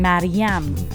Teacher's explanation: the exact Persian pronunciation with the second syllable stressed how it's supposed to be